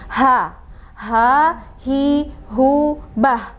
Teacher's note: Jadi kalau di bahasa umumnya adalah huruf H besar, dan salah satu sifat hurufnya adalah hams ya. Jadi ada udara yang keluar.